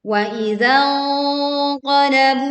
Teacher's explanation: Nah, ini bacaan sengau juga sehingga tidak tergesa-gesa dan bunyinya seperti ang. Angnya tebal karena huruf qaf ada pada pangkal lidah